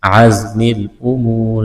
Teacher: عزم الامور زا میں سیٹی کی آواز پیدا کریں گے، واو مدہ ہے، ایک الف کے برابر کھینچنا ہے، وقف کریں گے، را کو ساکن کریں گے۔